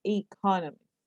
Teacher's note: there are four syllables in economies with the stress on the second syllable